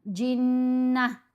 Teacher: اس کو ہم نے ہائے ساکنہ میں بدل کر پڑھنا ہوتا ہے. جنت نہیں کرنا، جنہ.